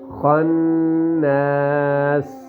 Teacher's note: خا کے آگے نون جو ہے وہ مشدد ہے، ٹھیک ہے، اور اس کو غنہ کریں گے اس پر